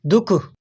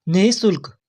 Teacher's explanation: विसर्ग की जो हमारे मुंह से हवा निकलती है वह हवा हमारे कंठ से निकलती है। गले से निकलती है।